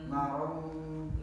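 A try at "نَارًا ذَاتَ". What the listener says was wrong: za. Naron za. Salah kalau narong. Nah, salah. Naron dia samar, Eva itu artinya samar. Tanwin ya, tapi masuk ke za. Naron za.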